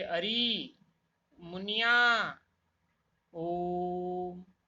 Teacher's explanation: ऐसे स्वरों के उच्चारण में 3 मात्राओं का समय लगता है, वे प्लुत स्वर कहलाते हैं